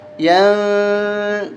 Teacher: یہاں پر غنہ ہوگا، فإنما، یا نون زبر ین، یہاں پر اخفا کریں گے ہم، ناک میں آواز چھپائیں گے